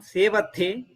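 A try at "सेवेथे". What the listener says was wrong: Yuvam sevethe. So all of you are forgetting this ekara.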